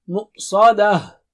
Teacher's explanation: Sa is very thick and high.